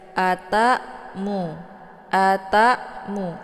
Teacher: pendek kemudian tak di sini Hamzah ya Hamzah sukun ini dibaca hamzahnya Dibaca tipis jadi cara bacanya tinggal ditekan saja Ata mu Ata mu jangan terlalu tebal kemudian mu dibaca pendek